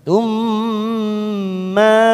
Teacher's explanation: huruf mim sukun yang bertemu dengan mim, namanya idgham mimi. Kita tekan selama 3 ketuk